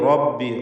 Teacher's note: റബ്ബി റാഇന് തഫ്ഖീം കൊടുക്കുക, തടിപ്പിച്ച് പറയണം